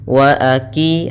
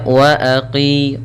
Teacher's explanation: qa lebih tebal, di sini huruf qaf